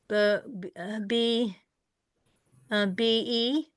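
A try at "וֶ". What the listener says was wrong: V-E. There's no dot in it, so it's a V,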